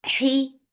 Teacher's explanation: For the ma circle ellipse, make it 2 counts long. He, for kasra, give e sound, and ha should be from your throat